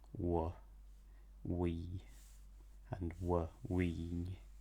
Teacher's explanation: So the broad BH and MH in Ulster is w, which is the same as English w. So it's a bit of an exception, but it follows the rules more or less because the lips are still rounded and it's still velarized.